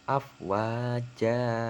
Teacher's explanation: Cara membacanya sama seperti matobi'i, yaitu dipanjangkan dua harokat atau dua alif ya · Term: mat iwad